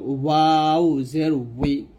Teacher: বাটা আমরা 2 ঠোঁটের ভিজা অংশে মিল করে বাটা আমরা পাতলা উচ্চারণ করব, বা জের বি। ওয়াউটা আমরা 2 ঠোঁট গোল করে ঠোঁটের মাঝখানে ফাঁকা রেখে আমরা ওয়াউট উচ্চারণ করব